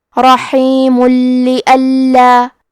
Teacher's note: غفور الرحیم، کلمت رحیم کے آخری میں میم پہ تنوین پیش ہے، اگر ہم یہ کلمہ کو اگلی آیت کے ساتھ ملا کے پڑھے تو حرف اللام کلمت لِأَلَّا حروف الادغام بغیر غنہ میں سے ہے، تو ہم تنوین کو لام میں ملا کے بغیر غنہ سے لیکن تشدید کے ساتھ یہ حکم کو ادا کریں گے۔ رحیم لِأَلَّا، اور ہم کلمت رحیم پہ رکے تو میم پہ جزم سے رکیں گے۔